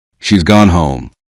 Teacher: The sound is clear but the full word has is not separately pronounced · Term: contractions